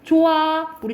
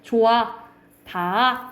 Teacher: 받침 히읗이 뒤에 모음으로 시작되는 어미나 전미사 결합하는 경우에는 소리 나지 않는다라는 거야. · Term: 히읗 탈락 현상